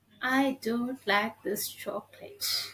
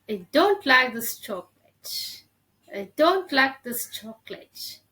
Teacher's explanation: We have to stress the important word which will make sense or which will make us to communicate, which I want to share is don't. I want to share that I don't like this, so I'm just giving stress on the word don't.